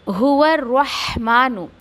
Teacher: फिर कुल हो गया हुआ रहमान, ये शुरू में मैं आपको बता चुकी हूँ, हुआ रहमानु, रहमानु कोई भी नहीं पड़ेगा, रह नहीं है, दैट इज़ रह, ओके। उसमें आपको हम्स की सिफत देते हुए ऊंचा करते हुए ऐसा पढ़ना है, आवाज़ ऊपर की तरफ। और यहाँ पर मीम क्या है, मीम पे खड़ा ज़बर है, 2 काउंट देना है आपको।